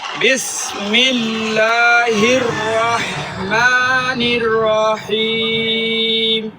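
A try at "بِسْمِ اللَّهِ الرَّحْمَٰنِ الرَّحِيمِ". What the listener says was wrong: টান দিছেন টান হবে না।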